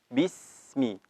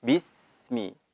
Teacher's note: Dalam keadaan sukun huruf sin harus dialirkan